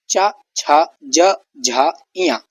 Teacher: जबान तालु से टकराते हुए ध्वनि निकालती है जब इन वर्णों का उच्चारण करते हैं। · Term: तालव्य वर्ग